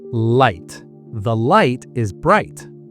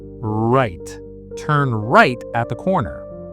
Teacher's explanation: For light, your tongue goes up. For right, your tongue goes back.